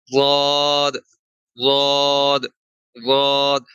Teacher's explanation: پیچھے جو داڑھیں شروع ہوتی ہیں نا اس کے ساتھ جو زبان کا حصہ ہے نا وہ والا حصہ آپ نے اوپر والی داڑھوں کے کناروں سے لگانا ہے. ٹھیک ہے، اور وہ دائیں سائڈ سے آسانی سے لگے یا بائیں سائڈ سے آسانی سے لگے، آپ نے وہ حصہ اوپر والی داڑھوں کے ساتھ لگانا ہے.